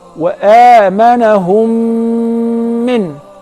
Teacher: if the first mim is non-vowel or sakina, followed by a voweled mim, so I will merge the first in the letter and I will pronounce them as one